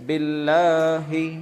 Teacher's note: لفظ اللہ کے لام سے پہلے کیا ہے؟ زیر ہے، اس لیے باریک پڑھیں گے، باللہ۔ یہاں تک ہوا تھا۔